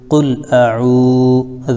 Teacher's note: قل حمزہ پر زبر ہے قل عین واو پہ شعو واو مدہ ہے اس لیے ایک الف کھینچیں گے. قل اعوذ ذال پر پیش ہے تو ذو.